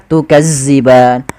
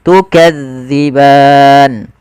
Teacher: pelafalannya di ujung lidah kita menempel dengan Gigi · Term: Zal